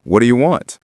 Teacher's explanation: And for what do you want, it often sounds like what do you want? The t and do blend into a dia sound.